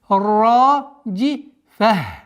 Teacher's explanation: После удвоения ра долгота в размере двух огласовок фатха.